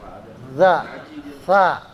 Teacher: sa sama zal sama tuh, ya, makhrajnya sama, ya, ujung lidahnya keluar sedikit di gigi